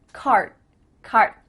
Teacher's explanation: My tongue is flat against the roof of my mouth to make the D, but it's not coming out.